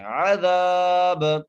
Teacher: سوط عذاب، عین کو اس کے مخرج سے ادا کرنا ہے، زال کو ایک لفظ دار کھینچ کے پڑھنا ہے، با پر قلقلہ کرنا ہے